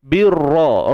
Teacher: Ra kita baca dengan tebal, ya, tafkhim. Sebab apa? Sebab ra berbaris atas.